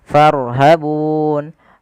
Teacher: Boleh kita panjangkan 2 harokat pada lafal bunnya, boleh 4 harokat dan boleh pula 6 harokat. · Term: mad arid